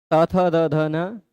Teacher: देखिए बोलते समय जीभ दांत पर टच कर रही है